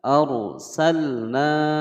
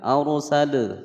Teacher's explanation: Arsa, ada ra sukun sebelumnya fathah dibaca tebal. Arsalna, ada lam sukun dibaca jelas tidak boleh dipantulkan.